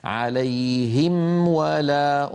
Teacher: أنهي الميم وأعطيها حقها من الغنة الناقصة لأنها ساكنة مظهرة، ثم بعد ذلك أنتقل إلى الواو دون أن أقول عليهم ولا، لا أخفي الميم عند الواو. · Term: ميم بعدها واو